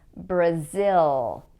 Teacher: In Portuguese, people tend to pronounce the L at the end of a syllable like oo, but in English, it is pronounced as L. What happens here is that the tongue goes to that same ridge that I was talking about before.